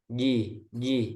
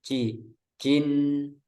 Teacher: Jadi dirapatkan di tengah lidahnya itu, ditempel ke langit-langit. Itu nempelnya nggak ada celah, nggak ada celah udara. Ji, ji. Jadi bukan ji, jin.